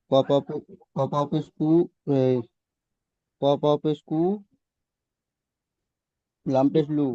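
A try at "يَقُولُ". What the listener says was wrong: না, দুটো অক্ষর একসাথে মিলে নেন। ইয়া জাবার ইয়া, কফ ওয়াও পেশ কু, ইয়াকু। তারপরে লামটা পড়েন, লাম র পেশ লুর, ইয়াকুলুর।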